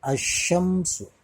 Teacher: alif lamnya hilang, dilebur ke dalam huruf shin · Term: alif lam syamsiyah